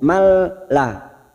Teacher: nun sukun bertemu lam namanya idgham bila gunah hanya masuk tanpa mendengung